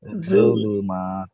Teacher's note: আমি যদি বলি জুলুমা, দেখেন দাঁতটা লাগে না জিভে। জিভটা দাঁতের একদম মাথায় নিয়ে আসেন, সামনে